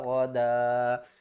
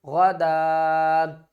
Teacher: دال کے جو دو زبریں ہیں ایک زبر کو ڈراپ کر دیں گے، دوسری زبر کو الف کے ساتھ ملا کر پڑھیں گے